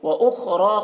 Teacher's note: خا کو پور پڑھیں گے، خا حروف مستعلیہ میں سے ہے، را کو پور پڑھیں گے، را کے اوپر کھڑا زبر ہے